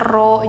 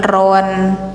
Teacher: Jadi gantikan suara N ke panjang. Yang awalnya ron jadi ro gitu. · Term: mad iwad